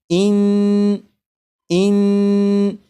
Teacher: जब आप पढ़ेंगे इन तो ज़बान तालू से लग रही है